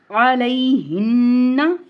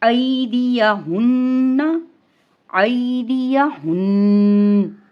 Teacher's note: نون شد میں تو آپ نے غنہ کو بھی ادا کرنا ہے